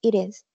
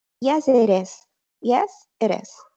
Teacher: Entonces, la T se convierte en R y decimos it is.